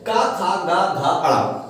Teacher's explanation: ये गले से बोलने वाला है, कंठ से बोले जाने वाले शब्द हो जाते हैं